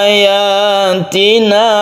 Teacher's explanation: Ayatina kita baca panjang satu alif saja. Ini bukan mad anid disukun.